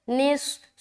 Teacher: صاد کی ادائیگی موٹے سے ہوگی، موٹے طریقے سے ہوگی کیونکہ یہ حروف مستعلیہ کے اندر آتا ہے